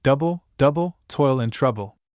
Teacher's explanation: a foot consisting of two syllables with the accent on the first